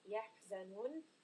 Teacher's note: this is a 4-count mud. يَحْزَنُونَ, when we are stopping.